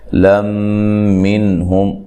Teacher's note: یہاں نون تنوین کا ادغام مع الغنہ ہے، غنہ کر کے پڑھیں گے